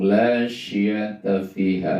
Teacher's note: La syiata fiha itu dibaca panjang 2 harokat karena matobi'i.